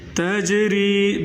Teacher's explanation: तजरी जीम पर क़लक़ला करें।